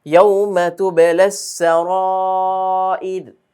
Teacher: ইয়াউমা তুবলাস সারাইর, রগুলো চিকন হবে, যেহেতু সাকিন র সাকিন তার ডানে আমরা জের পাচ্ছি, ওয়াকফের কারণে রগুলো সাকিন হবে আর তার ডানে আছে জের, সেজন্য রগুলো চিকন হবে।